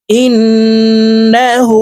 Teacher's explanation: এই হাকে উপরের দিকে ধাবিত করে ঠোঁট গোল করে এক আলিফ টেনে পড়বো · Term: উল্টা পেশ